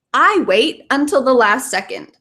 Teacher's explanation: usually we link those together so this almost sounds like one word